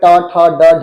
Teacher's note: ऊपर हल्को टच होते हुए जीभ मुड़ जाएगी